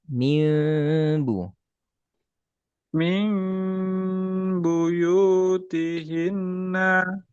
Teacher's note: mim kasih celah kasih celah jangan rapat